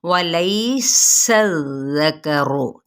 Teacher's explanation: सीन पे सीटी, ज़ाल नरमी के साथ, इस पे सीटी ना आए, ठीक है। ज़करु, रॉ की पेश को पुर पढ़ेंगे।